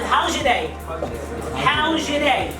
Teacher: Then Z plus Y together change into J sound.